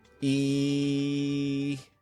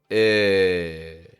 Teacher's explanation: The back of your tongue is between your teeth. For the first one, we go very strong in the sound. E. And for the second, we just relax the back of your tongue a little.